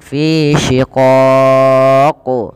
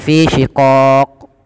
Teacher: ketika qaf sukun itu terhukumi dengan hukum bacaan namanya qalqalah. Maka ia perlu dipantulkan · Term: qalqalah kubra